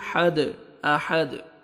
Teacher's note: ضمتین دن، آحادن۔ Stop کریں گے، آیت کمپلیٹ ہو رہی ہے، وقف کی صورت میں دال ساکن ہو جائے گا اور دال حروف قلقلہ میں سے ہے، ڈبل ساؤنڈ آئے گا